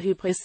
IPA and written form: ˈhyːbʀɪs (Hybris)